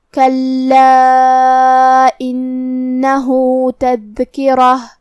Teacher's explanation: ہم کلمت تذکرہ پہ رکیں گے تو تا پہ ہا سے رکیں گے